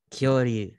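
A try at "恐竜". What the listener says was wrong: Yes, Kyoryu.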